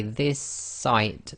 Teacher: you're holding the S at the end of the word this, and you're finishing off the sound of the S in the next word, which is sight. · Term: gemination